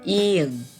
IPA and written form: iωŋ (이응)